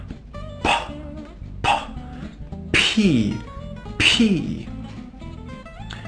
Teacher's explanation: our air and our tongue do you remember the P sound for that sound we need the air and we need to stop it with our lips